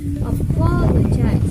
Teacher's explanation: primary stress is on the second syllable and secondary stress is on the fourth syllable. All other syllables are unstressed.